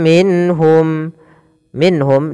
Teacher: dijelaskan suara nunnya karena dia izhar halqi